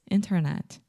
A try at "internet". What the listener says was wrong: Internet. First, most Brazilians, not all of you, but many of you have the tendency to say internet. There is no chi at the end. So the last sound, internet.